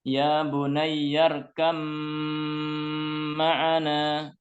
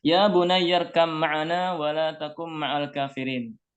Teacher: Khusus untuk ba bertemu dengan mim, maka dibaca dengan gunnah yang dipanjangkan. Ya, jadi untuk ba dan mim dia termasuk pengecualian.